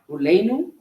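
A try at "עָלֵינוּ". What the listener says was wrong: Aleinu, good.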